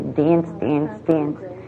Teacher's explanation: you heard the extreme raising of short a